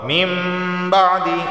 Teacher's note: اور یہ تا لام پیش تل، اوتوا الکتاب الا من بعد، نون ساکن کے بعد با آیا ہے تو یہاں پر اقلاب کا قاعدہ لاگو ہوگا، یعنی اس نون کو ہم میم سے بدل دیں گے اور غنہ ہوگا